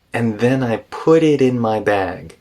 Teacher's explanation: we connect and then by removing that D and connecting the n sound to the th sound.